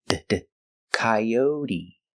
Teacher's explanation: And the T is pronounced with a D sound, d, coyote.